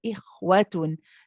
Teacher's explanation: It's also a rakhawa letter. It's one that you have to prolong. You keep it running and then smoothly go on to the waw.